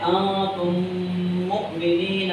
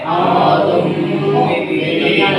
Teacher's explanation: یعنی ناک میں آواز جا کر ایک الف کے برابر غنہ کر کے پڑھیں گے. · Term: ادغام شفوی